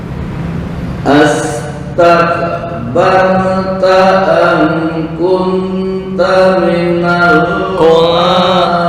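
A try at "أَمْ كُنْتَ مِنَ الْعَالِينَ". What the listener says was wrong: Ikhfa. Kunta kurang lama. Oke, yang kedua wasal 5 kepanjangan hanya 2. bukan biyadayya biyadayya astakbarta ya. Hamzah qata.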